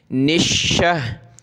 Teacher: हा के साथ मिलाएंगे, शीन को सख्त करेंगे तशदीद की वजह से